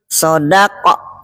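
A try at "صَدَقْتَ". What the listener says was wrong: Pakai O sikit. Sodaka. Sodaqa. Sodaqa.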